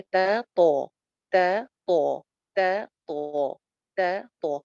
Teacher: جیسے تا اور کو، ان کا مخرج ملتا، ایک ہی مخرج ہے. مطلب جو اوپر والے دو دانت ہیں ان کی جڑ میں زبان لگتی ہے تو وہاں سے تا بھی نکلتا ہے اور تو بھی نکلتا ہے. اب ڈفرنس صرف اتنا سا ہے کہ تا کے مقابلے میں تو کی آواز موٹی ہے.